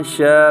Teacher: یہاں شاء میں الف باریک ہے